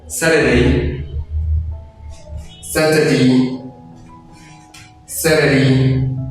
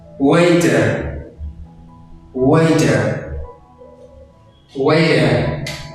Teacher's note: Même pour le deuxième mot, il y a T entre deux voyelles. Alors, le T se prononce D.